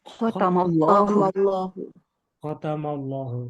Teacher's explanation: lam jalala tafkhim. Artinya menebalkan bacaan. Lam jenis ini merupakan lam jalala yang cara membacanya tebal.